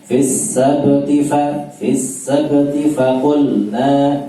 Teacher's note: setelah fis sabti, T-nya pendek langsung masuk ke fa